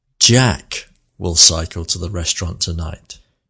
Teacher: You can hear that the word Jack has more melody. Plus, it also has a pause after the word.